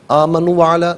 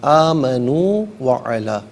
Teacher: آمنو میں جو نو ہے نا واو مدہ ہے، اس سے ایک الف کی مقدار کھینچ کر پڑھا جائے گا